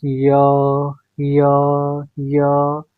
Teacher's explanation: तो आप देखेंगे कि मुंह में जो हवा है वह तालू को छू रही है। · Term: तालव्य